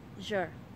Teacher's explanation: âm tiết thứ hai chứa nguyên âm r trong tiếng Anh Mỹ